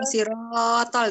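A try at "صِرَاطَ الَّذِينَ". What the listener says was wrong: Jadi dia itu panjangnya cuman ro 1 2 gitu. Kayak cuman kita ngomong aja gitu. Siratal ladzi gitu.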